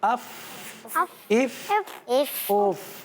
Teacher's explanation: ہاں نچلے والے ہونٹ اور اوپر کے دانت یہی لگ رہے ہیں نا